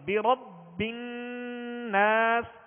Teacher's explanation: با حرف قلقلہ میں سے اور یہ تشدید ہے اس کے اوپر، مشدد ہے، لہذا خوب جماؤں کے ساتھ پڑھیں گے ، برب الناس، نون مشدد ہے،